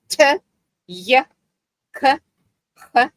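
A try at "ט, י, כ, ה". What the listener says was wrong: You're still saying it at the same speed. yeah, slow.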